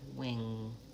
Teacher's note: Moving from bilabial to velar.